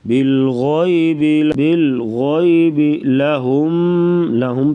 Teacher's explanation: بالغیب لہم پہ بھی غنہ کریں گے, یعنی ادغام الغنہ کر کے پڑھا جائے گا